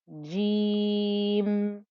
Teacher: the 2-count stretch for the jeem with the ya, and then I'm ending with a sukoon and ignoring the kasra